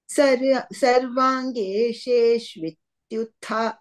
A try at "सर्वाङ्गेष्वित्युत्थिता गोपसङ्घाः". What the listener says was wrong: गेशे no So, ge shvityuthita. Shvityu.